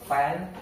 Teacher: labiodental, which is when bottom of our lips meet our upper teeth. So like this, the example is like this, where the upper teeth met the bottom lip.